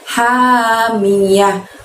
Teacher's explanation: huruf H itu kita keluarkan dari tenggorokan kita bagian tengah ya teman-teman. Lembut, lebih lembut daripada huruf H yang dikeluarkan dari tenggorokan bagian bawah tadi.